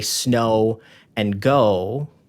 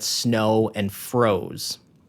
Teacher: That's a less stable rhyme because we're adding that Z sound.